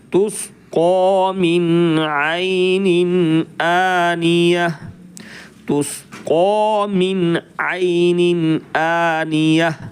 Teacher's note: اگر آیت کرنی ہے تو پھر اس گول تا کو آپ نے ہا ساکن بنانا ہے، نقطے ہٹ جائیں گے۔